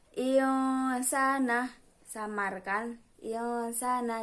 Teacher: Nah, di sana teman-teman dapat melihat bahwa terdapat nun sukun bertemu dengan sin, maka harus dibaca ikhfa atau samar